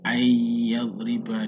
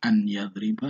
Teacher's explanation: seolah-olah nun sukunnya ini, nun matinya ini tidak terbaca. Nah, itulah dinamakan memasukkan suara huruf ke dalam huruf setelah nun, bukan membacanya an yadriba, tidak, ayyadriba, nunnya seakan-akan hilang tetapi tulisannya tetap nun. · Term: idgham bihuna